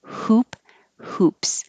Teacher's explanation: The H is heard just by airflow. You make air, hoop, hoops.